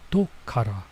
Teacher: Usually doko is where, but you'll see this little su here because instead of it saying doko kara means from or because you have two sort of sharp sounds beside each other, being ko and ka. The ko gets turned into a little tsu, so instead of it being doko kara, it's just do, slight pause, kara